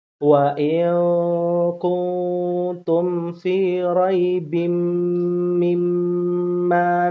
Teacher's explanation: ingat mim bertasydid gunnah. Ya, mim bertasydid gunnah.